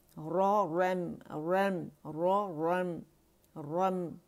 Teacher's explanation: خیال رکھیں گے را موٹی ہے، میم باریک ہے